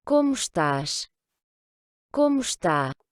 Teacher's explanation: le E est presque inexistant, hein. Donc, quand on prononce vite, d'ailleurs, on l'entend quasiment pas.